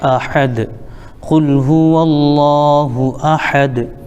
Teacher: یہ دال آیت کی وجہ سے ہم اس کو ساکن کر دیں گے